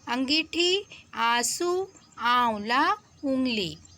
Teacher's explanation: हिंदी में नए स्वरों का विकास हुआ जिनके बोलने में हवा मुंह और नाक दोनों से बाहर निकलती है। इन्हें अनुनासिक कहा गया, जैसे अंगीठी, आंसू, आंवला, उंगली।